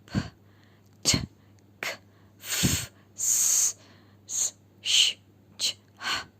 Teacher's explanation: You will not feel any vibration in your throat. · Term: unvoiced sound